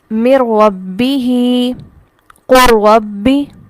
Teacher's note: گویا نون یہاں پر ہے ہی نہیں، لکھا ہوا تو ہے لیکن نون اس طرح سے مدغم فی میں داخل ہوا کہ نون نے اپنے آپ کو بالکل ہی ختم کر دیا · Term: تام